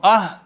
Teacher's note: ये जो हा है, ये थोड़ा सा, जैसे ये वाला हा था, ये हलक से निकलता है, तो इसको आप कह रहे हैं या तो हलक के बिल्कुल एंड से या कुछ ना कुछ पेट की तरफ से इसकी आवाज़ आती है